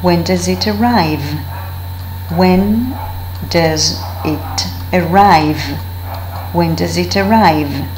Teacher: Now does with a schwa when the word is used as an auxiliary.